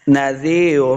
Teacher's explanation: نذیر، اگر ہم وقف نہیں کرتے ملا کے پڑھتے ہیں تو را 2 پیش رن یعنی تنوین کے ساتھ ہم نے اس کو پڑھنا ہے۔ نذیر، وقف نہ کرنے کی صورت میں را کو پھر پر پڑھنا ہے، موٹا کر کے پڑھنا ہے